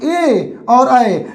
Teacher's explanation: ए और ऐ ये दो ऐसे वर्ण है जिसका उच्चारण स्थान कंठ तालू से होता है कंठ और तालू दोनों की मदद से होता है इ ये